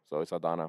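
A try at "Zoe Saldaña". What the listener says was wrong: No, Zoe Saldana. You said Saldana, how she says it. Well, her name is spelled with a nya. Yeah, but she doesn't acknowledge it.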